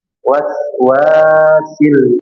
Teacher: Waw yang kedua panjang ada alif 2 harakat.